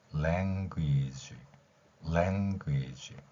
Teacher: language 이렇게 하세요. 맨 마지막에 G 발음은 우리말의 그 생쥐 이런 거 할 때처럼 G 길게 하는 게 아니라 G 이렇게 짧게 하시면 됩니다